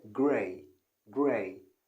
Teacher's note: so she used the glottal stop to say gray gray